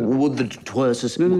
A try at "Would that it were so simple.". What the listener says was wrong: No, you seem to be lingering. It's interminable, the were. I'm wondering when it'll end.